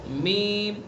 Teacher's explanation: میم دونوں ہونٹوں کی خشکی کا حصہ